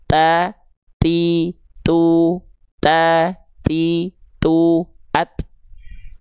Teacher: Dia sifatnya adalah hams, terpercik nafas. Makanya kalau huruf ta tadi sudah kita jelaskan dia ada percikan nafasnya ya.